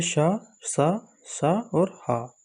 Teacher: जिन वर्णों का उच्चारण करते समय मुख से निकलने वाली वायु संघर्ष या घर्षण करते हुए बाहर निकलती है, उसे हम ऊष्म संघर्षी व्यंजन कहते हैं,